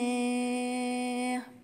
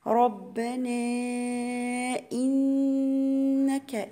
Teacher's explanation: واغفر لنا ربنا، مد 4 حركات، مد جائز منفصل